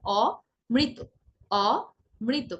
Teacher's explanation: আপনি যখন সঠিক উচ্চারণ করবেন অর্থাৎ দ্বিত্ব করবেন না তখন উচ্চারণ হবে অমৃত, অমৃত, প্রথমে অ বলবেন তারপর বলবেন মৃত, তাহলে দেখবেন ভুল উচ্চারণ হচ্ছে না, দ্বিত্ব হচ্ছে না।